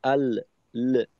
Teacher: তো এইখানে যদি আমাদের এমনটা হয় আল, আল, লামের মাখরাজে আমি আওয়াজটা কিছু সময় ধরে রাখলাম আল, যখন পৃথক হইলাম লামের মাখরাজ থেকে তখন একটা অতিরিক্ত আওয়াজ হইল আল, ল, এইটা অতিরিক্ত আওয়াজ।